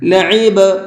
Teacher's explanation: اس با کے اندر قلقلہ کریں گے، اس لیے کہ با حروف قلقلہ میں سے ہے اور اس کے اوپر جزم بھی ہے، ہلکا سا آواز کو ڈبل کر کے پڑھیں گے۔